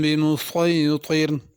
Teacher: بمسیطر میں صاد پڑھنا ہے، سین نہیں پڑھنا، اور طا بھی صحیح پڑھنا ہے، بمسیطر تا نہیں پڑھنا۔